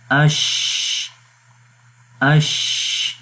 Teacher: سانس جاری ہو رہا ہے اور یہ وہی اسپیس ہے جہاں سے شین کی آواز یعنی ہمس کی کوالٹی جو ہے وہ صحیح پڑھی جا رہی ہے